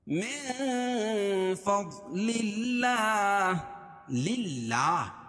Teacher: اللہ کے لام سے پہلے زیر ہو تو اللہ کا لام باریک پڑھا جائے گا. من فضل اللہ للہ اور کھڑا زبر قائم مقام الف مدہ کہ اس کو ایک الف کے برابر کھینچ کے پڑھیں گے.